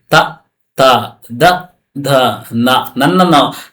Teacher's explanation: ದಂತ್ಯ, ಹಲ್ಲುಗಳ ಸಹಾಯದಿಂದ ಹುಟ್ಟುವ ವರ್ಣಗಳು, ಹಲ್ಲು ಇದೆಯಲ್ಲ ಇವುಗಳ ಸಹಾಯದಿಂದ ನೋಡಿ, ತ ತ ದ ಧ ನ.